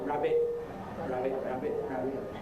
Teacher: Glottal stops for [t] in various syllable-final positions. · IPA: [ˈræbɪʔ]